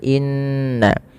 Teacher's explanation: apabila ada nun dan mim berharakat tasydid maka bunyinya wajib ditahan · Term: bacaan gunnah